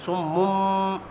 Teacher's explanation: میم مشدد پر غنہ کریں گے۔ جب میم با کے ساتھ ملے گا تو درمیان میں ایک اور میم آ رہا ہے، میم کی آواز پڑھی جائے گی، صم اور غنہ ہوگا۔